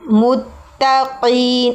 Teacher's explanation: قاف موٹا پڑھیں گے